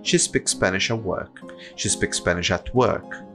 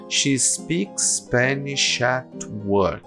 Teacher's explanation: Essa frase inteira se resume a apenas um som enorme. Porque a gente não divide absolutamente nada aqui, se a gente não quiser.